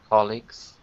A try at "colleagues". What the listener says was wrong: It's better, not perfect. Because it's got to be, you've got to use your voice. Gz. Gz. Colleagues.